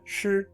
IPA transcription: ʂɻ